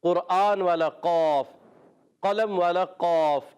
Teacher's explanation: زبان کی جڑ اور تالو کا نرم حصہ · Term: موٹے والا قوف